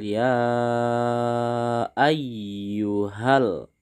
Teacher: Jaiz munfasil hukum Mad Jaiz munfasil ini nak terjadi apabila ada Mad Thobi'i yang bertemu dengan huruf hamzah didepannya ini Hamzah maka ia harus dibaca panjang